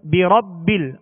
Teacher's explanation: را پر زبر ہے، را کو پر پڑھیں گے